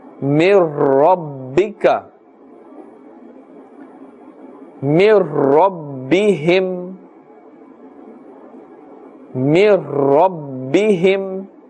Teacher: We are not stretching and pulling the sound here. We are saying in a normal manner, without pulling, without elongation, without ghunna.